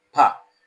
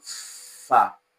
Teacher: So when you pronounce the sound pa, like you have in peak, you notice that the release of air is sudden, and that is why we call it explosive, from the word explosive. It's a plosive sound because it is a sudden release of sound pa, compared to the sound fa, which is voiceless labiodental fricative fa. That's a fricative because the release of air is gradual.